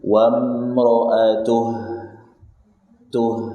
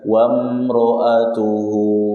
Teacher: Tapi kalau antum berhenti di hu, di sini kan di Quran yang anak pakai ada tanda waqaf di sini. Antum mau berhenti di hu, maka haknya disukun, jangan dipanjangkan.